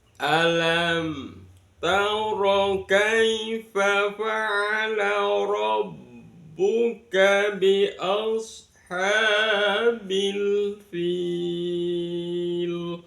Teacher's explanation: Nada yang pertama, nada datar terlebih dahulu.